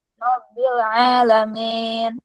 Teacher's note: tengah lidah tidak dinaik ke atas sehingga suara i tidak sempurna yaitu mirip E